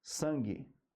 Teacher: o u tem que ser é mudo tá se ele for pronunciado já não tem o dígrafo